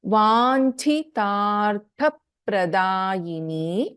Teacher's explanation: ಇನ್ ವಾಂಚಿತಾರ್ಥ ಛ is A ಮಹಾಪ್ರಾಣ and again ದ next letter immediately after ಚ ದಟ್ ಇಸ್ ವಾಂಚಿತ ತ ಅಲ್ಪಪ್ರಾಣ ಅಂಡ್ ದ ನೆಕ್ಸ್ಟ್ ತ ಇಸ್ ಅ ಮಹಾಪ್ರಾಣ · In Vanchitartha, Cha is a Mahaprana. And again, the next letter immediately after Cha, that is Vanchita, Ta Alpaprana.